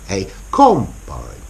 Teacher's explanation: with the noun, a combine, the stress is on the first syllable, on the com, a combine.